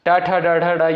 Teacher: ट, ठ, ड, ढ, ड ये आपका दोस्तों क्या हो जाएगा? मूर्धा से उच्चारित होगा।